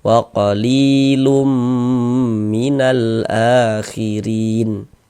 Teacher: Kemudian digunnahkan. Jadi bagian lumnya itu suaranya itu kita tahan, kita panjangkan saja sepanjang 2 harokat.